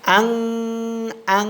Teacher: ইকফা গুন্না মানে নাকের ভিতর গোপন করিয়া লুকায়া পড়া